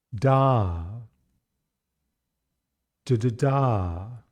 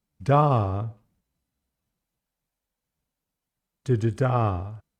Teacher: instead of just hopping over one unstressed syllable, d, we're going to hop over two of them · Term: pattern 3C